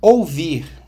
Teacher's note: Ouvir, na primeira sílaba, O é vogal e U semivogal